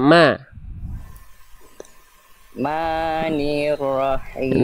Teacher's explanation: semua vokal a ya di lebih terbuka lagi ya lebih ringan lagi